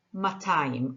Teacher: most modern Hebrew speakers say matayim. The aleph is written but not pronounced.